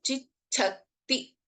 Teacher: have ಅಲ್ಪಪ್ರಾಣ ಚ the first letter and in the second ಸಂಯುಕ್ತಾಕ್ಷರ we have ಅಲ್ಪಪ್ರಾಣ ಚಸ್ well as ಮಹಾಪ್ರಾಣ ಛ